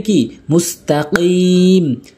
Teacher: কফের উচ্চারণ জিব্বার গোড়া উপরে তালুর সঙ্গে